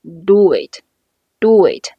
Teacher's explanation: 因为前一个词▁do▁它是以▁wo▁结尾，后边加元音的时候，中间可以轻轻加一个▁wo▁作为过渡